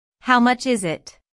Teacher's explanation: notice that the main sentence stress falls on is in this question